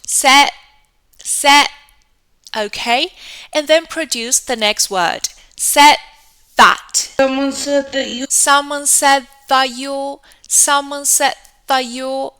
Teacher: You're going to say said, but do not pronounce that final D, okay? Just say said and put the tongue after the air sound, put the tongue out. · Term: assimilation